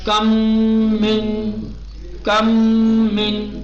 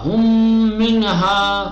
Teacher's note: ٹھیک، ادغام ہو گیا. اور جو ادغام ہوگا وہ غننے کے ساتھ ہوگا، یعنی کھینچ کر ناک سے آواز نکال کر پڑھیں گے